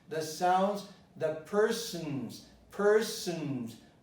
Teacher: I didn't say the O, I just said the N, syllabic N.